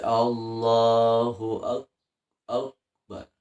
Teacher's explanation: Kaf itu dibaca istifar tidak dibaca istila artinya tidak dibaca tebal Allahu akbar dibaca Allahu ak Akbar Nah jadi tidak dibaca tebal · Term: dibaca tipis